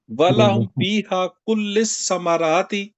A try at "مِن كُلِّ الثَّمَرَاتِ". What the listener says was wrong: مین کل ثمر، من بھی ہے ثمرات.